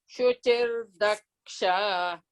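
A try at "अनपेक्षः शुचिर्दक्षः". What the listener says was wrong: Ksha, you should not elongate. It's short, no, and short vowel, no, at the end of the letter ksha, it is short one, not elongate.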